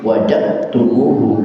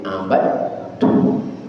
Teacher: Ketika dibaca wajadtumuh berarti tidak ada dalnya. Kemana dalnya? Masuk ke huruf ta, maka di huruf ta timbul tasdid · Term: Idgham mutajanisain